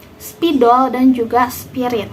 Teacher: Terwujudnya gugus konsoid SP melalui persenyawaan dari dua dasar pengucapan konsoid tersebut, yaitu dari apiko-alveolar desis tak bersuara berpindah kepada bilabial tak bersuara dengan tempo yang sangat cepat